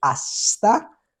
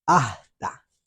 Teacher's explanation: la s suele no pronunciarse O es directamente eliminada cuando aparece al final de las palabras o cuando aparece delante de ciertas consonantes